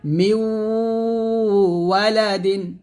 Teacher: যখন এখানে দেখুন নুন সেকেন্ডের পর ওয়াও আসছে, এখানে আমরা নুন সেকেন্ড উচ্চারণ করবো না, মিমকে ডাইরেক্ট ওয়াওকে ধরবো, গুণনা করবো। মিউ ওয়ালাদিন, মিউ বলতে হবে, মিমকে ওয়াওকে ধরবে, গুণনা হবে। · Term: ইদগামে বা গুণনা